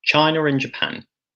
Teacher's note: There's a linking r joining these two vowel sounds there.